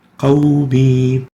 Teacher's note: Here the waw is a lean letter, not a mad, and because it has sukoon and it's preceded by a fatha, qawmi, not followed by a sukoon or a hamza. So the rule for the waw here is to extend it naturally for 2 units.